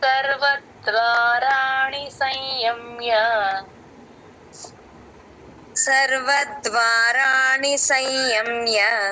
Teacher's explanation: య ముందు ఎప్పుడు సున్నా వచ్చినా హాఫే పలుకుతాం నాసిల్ సౌండ్ తో